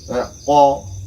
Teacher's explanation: To, bal, mustaqim. Qaf, nah, qaf ini dia itu pangkal lidah, bukan huruf khalqi. Karena kadang orang itu kalau terlalu melebih-lebihkan, sehingga kadang mengucapkan qaf itu kadang susah, karena seolah-olah dipaksa untuk sebagai huruf khalqi.